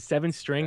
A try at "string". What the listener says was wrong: You say string with a K?